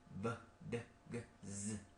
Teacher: So what about voiced sound. You could feel your Adam's apple, b, d, g, z. Is there any vibration? Yes.